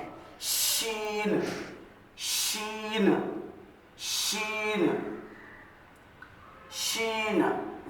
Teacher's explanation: जबान का दरमियानी हिस्सा ऊपर के दरमियानी ताल को लगने से शीन की आवाज